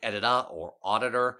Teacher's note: Each word had two flaps in a row and an array of combinations of normal and r-like vowels surrounding the flaps.